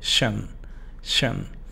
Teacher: Es como si solamente fuera sh, n. Pero sí es schwa, o sea, shun, shun.